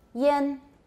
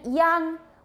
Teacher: this is very back and because it's back we now have an ah instead of an a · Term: velar nasal